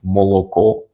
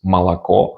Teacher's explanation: Или в некоторых местах люди не акают, which means they pronounce O as O, even in unstressed syllables